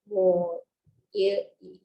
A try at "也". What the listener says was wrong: 我也是同事。我也是同事。Okay, can Again, this is pronounced yeah, not you.